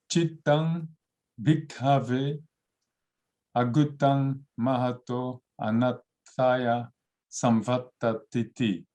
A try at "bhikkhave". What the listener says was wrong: And you have to pronounce this aspiration. So Chittang bhikkhave, not bhikkhave.